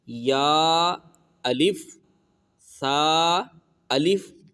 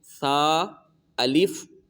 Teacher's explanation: یہ سا، یہ بغیر سیٹی کے پڑھیں گے